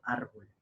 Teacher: Fuerza de voz en la sílaba ar. Y ar sería la última, no, la penúltima sílaba.